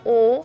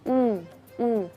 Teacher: harus bibir kita ee maju ke depan atau monyong dan e lingkarannya kecil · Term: damma